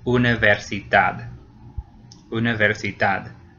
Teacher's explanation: No, it doesn't. It ends in a D. So in that case, the very last syllable gets stressed.